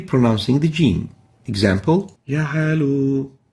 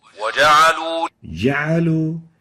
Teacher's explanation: In this case, we can barely hear the jim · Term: weakly pronouncing the jim